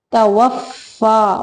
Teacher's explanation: واو کو ادا کرتے ہوئے ہونٹوں کو گول کرنا ہے